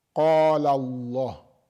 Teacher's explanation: the qa is heavy, the lam is light, and then the lam of Allah is heavy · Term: hamza should be light